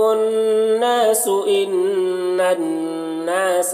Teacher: لہم الناس نون مشدد ہے، یہاں پر غنہ کر کے پڑھنا ہے۔ ان یہاں پر بھی دیکھیں نون مشدد ہے، اور ناسا یہاں پر بھی نون مشدد ہے، تو دونوں جگہ غنہ کرنا ہے، اور ناسا کو کھینچنا بھی ہے، الف مدہ ہے۔